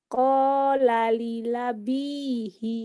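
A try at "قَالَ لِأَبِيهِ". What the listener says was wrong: Li'a, bukan lila lila. Li'a. Qala li abihi. Li abihi.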